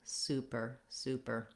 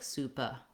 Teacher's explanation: super um but you don't want it to sound like supa we don't want an a sound here we need our tight american er